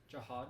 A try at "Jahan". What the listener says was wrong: N, not a D. Jahan.